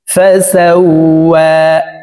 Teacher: ওয়ার উপরে খারা জবর আছে, তাই এই ওয়াও হরফকে এক আলিফ টেনে পড়ব